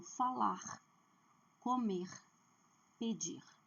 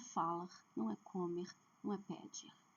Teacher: Todo verbo que terminar com R, a última sílaba é forte. Então, falar, comer, pedir.